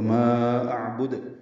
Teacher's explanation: ما اعبد میں ما مد منفصل ہے، 4 حرکات لمبا کریں گے، حمزہ اقصی حلق سے ادا کریں گے، عین وسطی حلق سے ادا کریں گے، اور دال ساکن پہ قلقلہ ہوگا